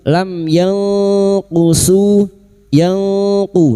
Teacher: Kita samarkan bunyi nun sukun dan mendengung selama tiga harakat. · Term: ikfa hakik, ikfa hakiki